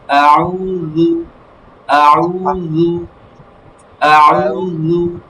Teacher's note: আউ পেশের উচ্চারণ সর্বদা ঠোঁট গোল হবে, আর রু জিহ্বার আগা থেকে পাতলা হবে।